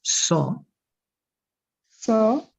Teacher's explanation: only like o, a wide open o